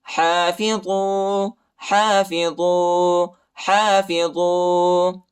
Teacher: ہا پر کڑا زبر آیا ہے، اس کو ایک الف کے مقدار تک کھینچیں گے